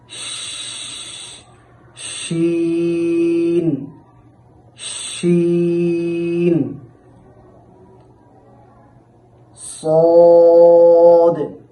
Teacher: এই শিন হরফটিও উচ্চারণের সময় মুখের ভেতরে বাতাস ছড়িয়ে যাবে যার মাধ্যমে শাসা একটি শব্দ তৈরি হবে